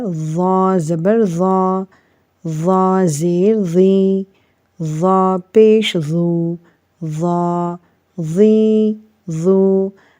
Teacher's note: اب یہاں پر ہم نے اس کو بھاری آواز کے ساتھ پڑھا، لیکن اس میں سیٹی نہیں بج رہی، ضا میں سیٹی نہیں بجتی۔